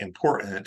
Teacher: words like i m p o r t a ant important a lot of people are now saying that important they're taking that t out